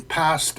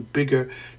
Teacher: the p in past and the b in bigger two sounds differing only in whether they are voiced